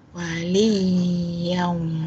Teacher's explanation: Kita tekan wali, tekan sikit pada ya tu sebab ada sabdu. Waliyam. Yam dengung.